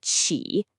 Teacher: That's the third tone. It goes down then back up. · Start mid, go down, then scoop it up.